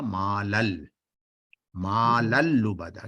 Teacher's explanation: مالن جب جی ملائیں گے تو یہ بن جائے گا مالل، مالل لبدا.